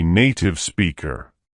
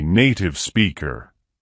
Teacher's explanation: he speaks with some traces of a kentish accent for example glottal stops